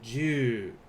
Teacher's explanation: we have that final oo, so like I said, I over-exaggerate this so it's easier to hear. We are going to hold that out, so ju. To make numbers larger than 10, you may have to review the video for this one, but remember, 10 is always going to be there.